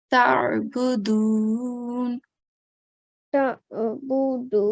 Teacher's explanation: The next thing is the sound of the letter Ain. Okay, so Ain comes from the middle of the throat. It's a throat letter, and it sounds different from the letter Alif.